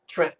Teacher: If you're from South Jersey, skip the T.